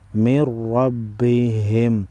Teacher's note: نون ساکن کے بعد را ہے ادغام بلا غنہ ہوگا را پر زبر ہے موٹا پڑھیں گے نون مشدد کو بھی